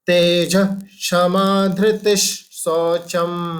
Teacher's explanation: हमने जो विसर्ग है उसके बाद जो श आएगा, इसलिए हम उसको श धृतिश कर देंगे